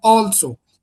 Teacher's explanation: in also the stress lies on the first syllable but the other word is the stress lies on the second syllable.